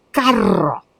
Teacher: La R lo que tiene es dos sonidos. un sonido vibrante fuerte cuando digo carro